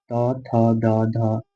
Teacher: कह रहा है द दंता या द ठीक है लिखेंगे लरी त थ द ध ल तथा स का उच्चारण दात के द्वारा होता है